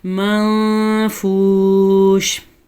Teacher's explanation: اب نون ساکن کے بعد حروف اخفاء میں سے فا آیا ہوا ہے، تو اس نون ساکن کو کسی حد تک چھپا کر پڑھیں گے، اسے اخفاء کہتے ہیں